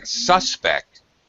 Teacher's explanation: syllable stress when it's a verb he is my main suspect suspect when it's a noun first syllable stress